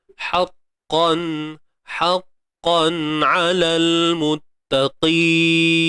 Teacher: Ha pedas. Okey, tengah kerongkong disempitkan ha, kemudian qaf pun sama tebal